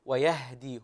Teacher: وقف وجعل شيئا من القلقله في حرف الهاء